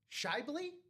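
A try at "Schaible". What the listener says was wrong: No, but the A is before the I. I'm going to go Scabely. Scabes. You wouldn't say Shibes.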